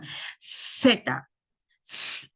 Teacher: Nosotros no tenemos esa pronunciación, que sería dental, es interdental y es sorda